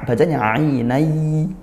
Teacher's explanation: Pakai ain dilatih senantiasa makhrajnya tengah tenggorokkan ainay ya. Tanwin bertemu ya idgham bighunnah. Seolah gak ada nunnya.